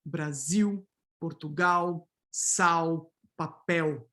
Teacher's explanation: Coda L in Brazil is fully vocalized, right? So this orthographic L here is pronounced like a W.